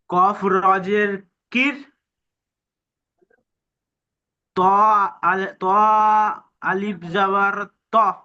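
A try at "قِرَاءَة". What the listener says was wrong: ত আলিফ মাদাগুলো আপনি টান দেন না কেন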